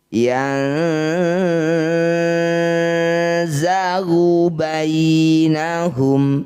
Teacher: Yan zagu zai makrijul hurufnya ujung lidah bertemu ujung dua gigi seri yang bawah ya. yang jadi saat dengung ujung lidahnya sudah menyentuh ujung gigi bawah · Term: ikhfa